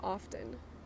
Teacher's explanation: Often, you are supposed to pronounce the T, but a lot of people don't pronounce the T.